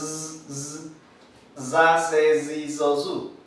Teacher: Es como una vibración, es como si fuera parecida a la S, pero vibra, z, z, za, ze, zi, zo, zu. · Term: alveolar sonora